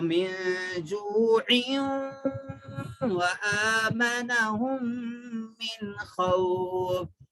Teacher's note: جوع پڑھے تو دیکھو ادغام مع الغنہ کا قاعدہ ہو جاتا، جو آپ پڑھے عین تنوین کے بعد میں اگر واو آیا تو کیا کرنا ہے، نون کی آواز کو ناک میں لے جا کے پڑھنا ہے